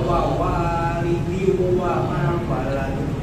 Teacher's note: Wanya panjang, dua harokat yang kedua